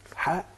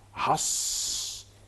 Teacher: حا دي مرققه حص دي مفخمه